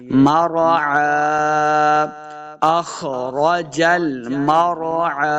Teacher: عین کو صحیح تلفظ کے ساتھ پڑھیں گے، یعنی حمزہ کی آواز نہیں بلکہ عین کی آواز آنی چاہیے